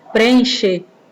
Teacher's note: são duas vogais as vogais iguais né o som dele meio que acaba se alongando a gente não não pronuncia como se tivesse repetindo mais alongando